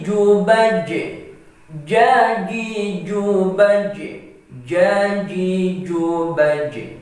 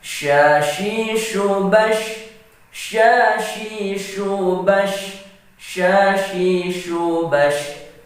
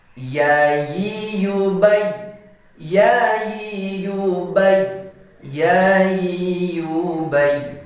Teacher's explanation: Jadi, ketika menyebutkan ketiga huruf ini, maka syarat untuk dikatakan sempurna menyebutnya ketika kita merasakan bahwa tengah lidah menyentuh di langit-langit. Sekali lagi, syarat kita mengucapkan dengan sempurna huruf yang ada di tengah lidah ini, yaitu tengah lidah harus menyentuh di langit-langit.